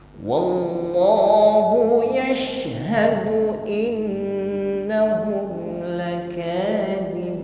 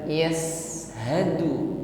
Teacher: shin sukun, nampak sifat tafasyi, intisyar rih fil fammi, menyebar angin nafas di dalam mulut kita